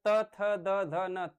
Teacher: फिर उसके बाद त, थ, द, ध न त बोलिए, थ बोलिए तो आपकी जीहवा जब दांतों से टकराती है तब आप इसका शुद्ध उच्चारण कर पाते हैं।